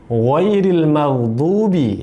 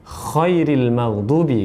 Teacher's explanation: huruf kha dengan huruf gha ini satu makhraj, satu tempat keluar, yaitu berada di ujung tenggorokan